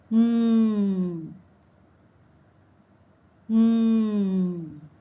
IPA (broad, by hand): n